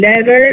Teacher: the tah alveolar becomes flap alveolar because it occurs between two vowels, or it occurs in an intervocalic position.